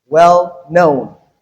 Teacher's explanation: So in this case the stress is on the second word in the compound.